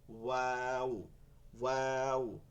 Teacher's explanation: দুই ঠোঁট গোল করিয়া মুখ 1 আঙ্গুল পরিমাণে, মুখ হচ্ছে 1 আঙ্গুল পরিমাণে খোলা রাখিয়া ওয়াও উচ্চারিত হয়।